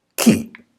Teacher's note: right sound for this couple of consonants is simply K, with no sound for the H itself.